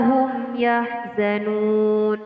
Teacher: Nun di sini adalah terdapat hukum bacaan mad aridilis sukun. Cara membacanya dengan memanjangkan matnya sebanyak 1, 2 sampai 3 alif atau sebanyak 6 ketukan. Dan mad arid di sini selalu berada di akhir ayat.